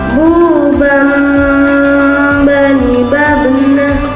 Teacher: Ketika huruf Ba dalam posisi mati, suaranya harus terdengar mantul.